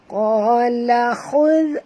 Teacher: huruf kha kena baca tebal, huruf zal ringan.